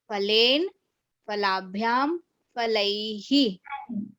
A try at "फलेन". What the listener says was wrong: दो गलतियां हैं, एक तो फा है, फा दूसरा नहीं है, ना है, ना पूरा बोलो। हाँ, फलेना फलाभ्याम फलैहि।